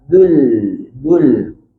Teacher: Kita muncung masa bunyi zul. Bila masuk lam, buka balik sikit mulut kita sebab kita nak nipiskan lam.